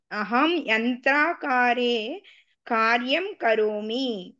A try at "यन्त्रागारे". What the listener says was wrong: यन्त्रागारे नास्ति यन्त्रागारे गा अत्र दोषमस्ति अहं यन्त्रागारे कार्यं करोमि